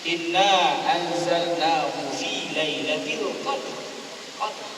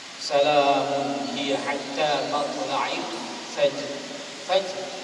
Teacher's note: Sedangkan perlu disebutkan di situ ialah qadr, getaran itu tetap ada. Huruf ra yang dimatikan itu mestilah dibunyikan, ya, dari segi getaran, takrir